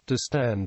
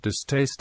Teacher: distend has unaspirated since it is not analyzed as two morphemes, but distaste has an aspirated middle because it is analyzed as dis plus taste, and the word taste has an aspirated initial t.